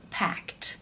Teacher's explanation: For example, the word pack. When you add the ed, it becomes packed because the k sound is unvoiced. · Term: t sound